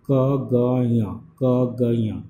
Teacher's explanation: वेलर में the back of the टांग is the एक्टिवर्टिकुलेटर and the soft plate is the पेसिवर्टिकुलेटर